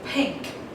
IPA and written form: piŋk (pink)